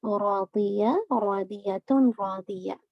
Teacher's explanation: اچھا راضیہ کے اندر ضاد کو ہیوی رکھیے گا، راضی نہیں کرے گا، ضوئی، ٹھیک ہے.